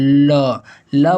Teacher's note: ल बोलने पर हमारी जीभ थोड़ी सी बीच में गोले जैसी होगी और हमारी अगल बगल से हवा निकलती है, ठीक है। तो यहाँ पर पार्श्विक है, तो यहाँ पर ल सही जवाब हो जाएगा।